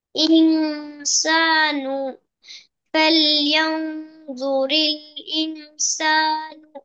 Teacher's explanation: গুণার পরিমাণটা আর একটু বাড়াতে হবে